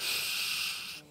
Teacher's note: It's almost the middle of the tongue, or the blade of the tongue which moves upwards towards the hard palate